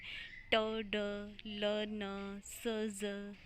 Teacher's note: और passive articulator जो move नहीं हो रहा वो है टीथ रिज। आप जब बोल के देखोगे ना तो आपकी जो टंग का ब्लेड है वो टीथ रिज के साथ टच हो रहा है। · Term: एल्वियोलर साउंड्स